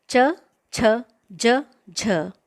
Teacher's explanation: इन सब का उच्चारण स्थान तालु होता है, यानी उच्चारण करते समय जिह्वा दांत के ऊपरी हिस्से को अंदर से स्पर्श करती है, इसलिए इनको तालव्याः कहते हैं।